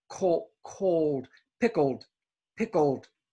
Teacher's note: This is like the word cold. The L has a little O sound.